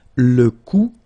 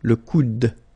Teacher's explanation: you don't insist on this final e, it only gives you the sound of d at the end.